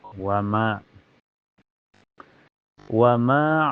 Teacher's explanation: dibaca panjang dua harakat dan makhrajnya ini keluar dari aljauf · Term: mad thobi'i